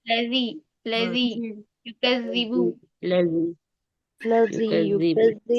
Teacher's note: जाल बहुत नरमी से अदा होता है, सख्ती नहीं करेंगे इसे अदा करने में ना। जुबान की नोक और ऊपर के दो दांतों के किनारे